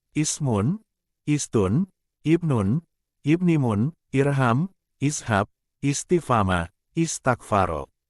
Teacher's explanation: Hamzah wasyol tidak dibaca apabila bacaan dari dua kata dirangkaikan, tetapi apabila dijumpai pada pangkal kata, maka hamzah wasyol lebih sering dibaca sebagai bunyi i